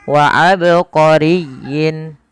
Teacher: tatkala kita membaca ba di sini harus dipantulkan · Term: qalqala